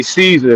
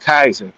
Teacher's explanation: There is no soft C in Latin. It's all K.